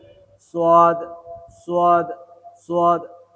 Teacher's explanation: এই সোয়াদ 2 ঠোঁট থেকে উচ্চারণ হবে। গোল ঠোঁট দুটো একটু গোল করবেন।